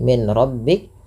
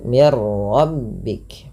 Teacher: dengan memasukkan bunyi Nun kepada huruf ro